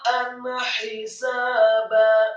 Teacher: ain ditekankan fathah satu harokat, kemudian huruf ta-nya dibaca fathah dengan mad yang sempurna 4 sampai 6 harokat. Membaca huruf ta dibaca tafkhim tebal dengan posisi lidah di langit-langit atas.